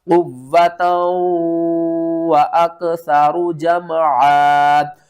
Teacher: اس واو کو ہم نے سختی کے ساتھ پڑھنا ہے، اس واو کے اوپر ہم نے غنہ کرنا ہے